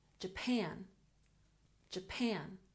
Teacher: Japan has emphasis on the second syllable